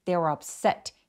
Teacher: 그래서 한 덩어리처럼 they were up 해주시고 they were upset 해서 set의 강세가 또렷하게 질 수 있도록 해주세요.